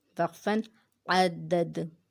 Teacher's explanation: وقف میں دال ساکن ہو جائے گا تو ہم قلقلہ کریں گے